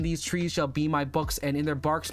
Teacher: So the idea is it has a rhythm of bump bump bump. So it's unstressed stressed unstressed stressed for 10 syllables every single line.